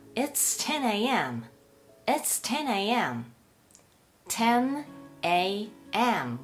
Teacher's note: 10の▁N▁が子音で▁AM▁の▁A▁が母音なので▁10a▁というふうにくっついてしまいます